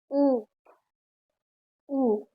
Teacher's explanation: ऊ ऊ ओठ हमारे हो रहे हैं। ऊ ओठों का प्रयोग कर रहे हैं ना तो हमारा आएगा ओष्ठ